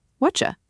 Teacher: The t and the y smoosh together and make a ch sound. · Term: assimilation